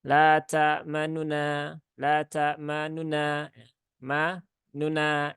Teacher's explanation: nunnya itu Dibaca tapi dengan kadar yang lebih pendek tidak sampai satu harakat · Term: raum atau ikhtilasnya